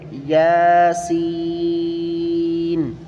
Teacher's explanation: پہلا والا لفظ یا ہے، دوسرا سین ہے، سین کو سیٹی کی آواز نکال کر کھینچ کر پڑھنا ہے